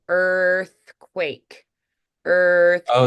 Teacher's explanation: for earthquake I stay rounded the majority of the time during the word earthquake